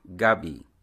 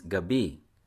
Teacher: yam you say it with a stress on the first syllable the word for evening or night is Gabi which is stressed on the second syllable